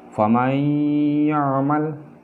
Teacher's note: cara bacanya dia untuk idgham bi gunnah ini dia disengaukan atau didengungkan sesuai dengan arti daripada idgham bi gunnah, ya.